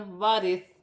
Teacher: ثا کو ادا کرتے وقت خیال رکھنا ہے کہ سیٹی نہ ہو. ثا نرمی والا حرف ہے